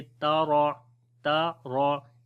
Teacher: आगे ता को बारीक पढ़ेंगे, रॉ को मोटा पढ़ेंगे